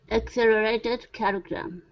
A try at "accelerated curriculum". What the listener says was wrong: There you go. Good.